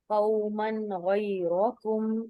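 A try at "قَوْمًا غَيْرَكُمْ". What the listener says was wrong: शाबाश।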